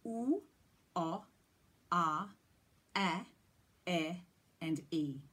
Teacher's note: we start with the tongue being in a neutral back position, and as it moves through those vowels, it rises and spreads and comes forward in the mouth